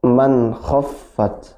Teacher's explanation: maka suaranya jelas, izhar ya, tidak boleh dengung, tidak boleh dipantulkan.